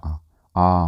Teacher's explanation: फिर पश्च स्वर में बड़ा आ जैसे ही आप बोलेंगे तो आपकी जीभ पीछे की तरफ शिफ्ट होएगी